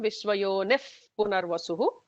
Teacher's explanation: Visarga followed by a pa will get a F kind of a sound. So it will become Vishwayonif Punarvasuhu.